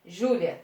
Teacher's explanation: A pronúncia mais forte, a sílaba mais forte é Ju